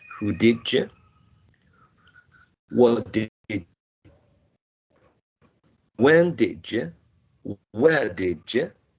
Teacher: we also have your coalescence here, right? D and Y become J.